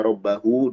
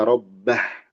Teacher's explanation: kalau disambung dibaca rabbahu dua harakat tapi kalau berhenti dibaca rbah